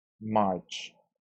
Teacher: CH sound is voiceless, so we pronounce it as T, marched